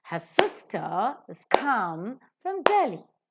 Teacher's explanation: if you look at come, it is to be aspirated and it is to be accented as well.